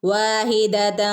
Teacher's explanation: ഇവിടെ രണ്ട് ഫത്ഹ ഒരുമിച്ചല്ല വന്നിട്ടുള്ളത് അല്ലെ അപ്പൊ നമ്മൾ എങ്ങനെ ഓതണം വാഹിദൻ തൻ എന്ന് വ്യക്തമാക്കാതെ ഇവിടെ ഒരു മറച്ചു പിടിച്ചിട്ട് ഓതണം